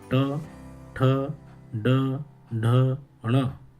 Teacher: ये सभी जो वर्ण हैं इनका उच्चारण मूर्धा से होता है, इसलिए इनको मूर्धन्य वर्ण कहा जाता है।